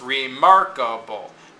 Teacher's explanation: Re is this prefix, so it's unstressed.